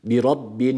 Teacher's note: şeddeli olan nun harfini uzatırken de a sesi vermekten kaçıyoruz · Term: gunne